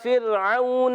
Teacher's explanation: الا، اب یہاں پر حمزہ ہے، خوب ظاہر کریں گے، لام کھڑا زبر لا، ایک الف کھینچیں گے، پھر راؤن، را ساکن سے پہلے زیر آ رہی ہے، را کو باریک پڑھیں گے، پر نہیں کریں گے